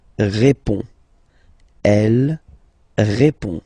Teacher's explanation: So final D is not pronounced. You will only have this on nasal sound at the end.